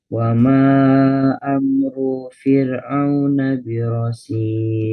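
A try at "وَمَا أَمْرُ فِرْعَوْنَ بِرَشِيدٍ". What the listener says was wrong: Runya jangan dipanjangkan. Runya pendek. Ru. Tapi au-nya jangan ketekan juga. Wa ma amru fir'auna birasyid. Jadi kalau panjang ya panjang, pendek ya pendek dibaca itu.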